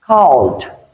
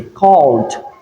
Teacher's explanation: The first pronunciation is D. When we have ed added to a verb that ends with a voiced sound, that ed is realized as d, because d is a voiced consonant sound.